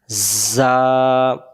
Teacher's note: যা অক্ষরের সামনের নিচের দাঁতের আগা থেকে শীষ দিয়ে পড়তে হয়